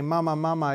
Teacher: you have an ah, and then you close your mouth and you make a mm. And so mama, mama is at the same frequency, but mm is quieter than ah.